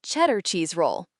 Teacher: The D sound in cheddar was almost silent. It sounded like cheddar cheese roll. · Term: connected speech